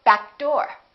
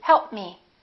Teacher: if the content it doesn't have the same point of articulation make sure you hold that first consonant and kind of link it